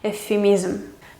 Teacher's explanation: Se juntan aquí V y F, entonces se pronuncian como una especie de F suave, larga